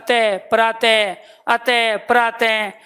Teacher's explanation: विसर्ग का उच्चारण करोगे ना आप अतः प्रातः अतः प्रातः तो वायु ज्यादा लगेगी।